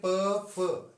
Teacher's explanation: जब प फ करते हैं तो आपके होंठों का जो है मैक्सिमम प्रयोग होता है, तो ये ओष्ठ से।